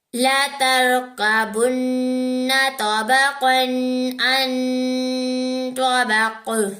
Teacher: تو ہم یہاں پر غنہ نہیں کرتے کیونکہ یہاں پر اظہار ہوتا ہے، رول آف اظہار ہوتا ہے، یعنی قاعدہ آف اظہار ہو رہا ہے، یہاں پر قاعدہ اظہار کا ہو رہا ہے تو غنہ نہیں کریں گے.